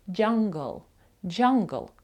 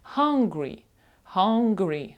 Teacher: знову ж таки г звук після н у слові Hungry вимовляється задньої частини язика